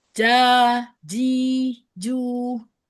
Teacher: Pada harfu jimnya masih ada hamsnya. Masih ada kayak aliran udara gitu keluar.